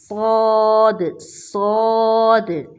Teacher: پیچھے سے ہماری زبان صاد کو ادا کرتے ہوئے اوپر کی طرف اٹھ کر موٹی ہو گئی ہے۔ اگر اس کو باریک آواز میں پڑھیں گے تو ساد بنتا ہے، جو کہ بالکل غلط مخرج ہے، تو اس کو بولڈ کر کے پڑھیں گے، صاد صاد، صا صی صو، صالحات صادقین، ابصارہم یبصرون، مصلحون۔